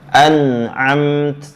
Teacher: Ada bunyi ta mati yang wajib dinampakkan hamesnya, yang wajib terkeluar nafasnya.